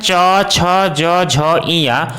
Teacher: इन सभी वर्णों का उच्चारण तालु से होता है।